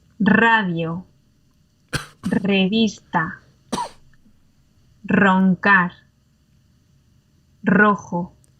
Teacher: This is the more complicated one. It's the one that you've got to trill or roll your R.